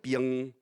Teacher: In the south of Malaysia, it's more like piang, so it becomes like a glide or something with a schwa